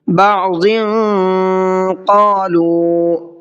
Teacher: بعض قالوا، اب یہاں پر دیکھیے قالوا میں پھر چھوٹا مد ہے، اس کی وجہ یہی ہے جو میں نے آپ کو ابھی بتائی تھی، حروف مدہ کے بعد حمزہ دوسرے ورڈ کے اندر ہے، دوسرے کلمے کے اندر ہے، تو اس کو 1 سے 3 الف کی برابر کھینچنا ہے